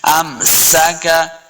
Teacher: سین پہ سیٹی کی آواز آئے گی